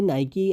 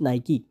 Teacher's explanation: it's actually pronounced Nike with an extra E sound at the end